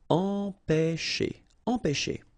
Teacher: All right, nasal here, en, pe, and then you've got this ch, and it produces this sh sound.